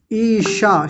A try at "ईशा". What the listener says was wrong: पूरा नहीं आता आपका तालव्य शकार स जैसा आता है